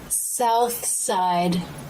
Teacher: Tongue tip comes through the teeth for the TH. Then the tongue tip comes back into the mouth and lightly touches behind the bottom front teeth while the teeth close to make the S sound. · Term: unvoiced TH